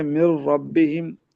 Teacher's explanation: इदगाम है लेकिन गुन्ना नहीं है